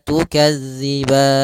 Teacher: tidak terlu pendek dua harakat yaitu empat harakat yang tengah-tengah maka tukazziban empat harakat saja baru dimatikan nunnya dengan sempurna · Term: Mad Arit sukun